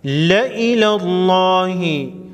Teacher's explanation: لفظ اللہ کے لام کو موٹا پڑھیں گے۔ لا الہ لا الہ اللہ نہیں پڑھیں گے۔